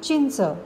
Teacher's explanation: थोडे लक्ष देऊन उच्चार करून पाहिला तर तुमच्या लक्षात येईल की इथे न चा उच्चार करताना जीभ आपल्या टाळूला लागते